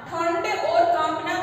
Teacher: ठंड और कांपना दोनों शब्द में अनुस्वार का प्रयोग हुआ है जिसका उच्चारण हम नाक से करते हैं, बिंदु के रूप में जो हमें दिखाई दे रहा है उसको बोलते हैं अनुस्वार।